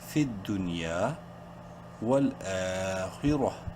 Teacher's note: خا زیر خی، را زبر را، دونوں کو منہ بھر کے پڑھیں گے. خا بولڈ لیٹرز میں سے ہے اور را کے اوپر زبر ہے.